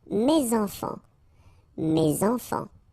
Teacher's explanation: Enfants, children is starting with a vowel, so you should make the liaison, mes enfants.